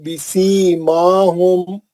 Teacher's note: मीम पढ़ते हुए दोनों होंठ आपस में शिद्दत से ना मिलाएं, बल्कि बीच में एक थोड़ा सा सुराख रख के मीम की आवाज को छुपा के गुन्ना करें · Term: इख्फाए शफी